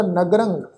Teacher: ਰਾਰੇ ਉੱਪਰ ਟਿੱਪੀ ਦੀ ਮਾਤਰਾ ਦਾ ਨਾਸਕ ਉਚਾਰਨ ਹੋਏਗਾ